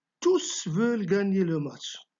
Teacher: Donc le S final s'entend à l'oral. Vous devez prononcer le S final quand le mot tous est placé devant un verbe.